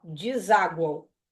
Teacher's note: É GU, esse U tá pronunciado. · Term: tritongo, nasal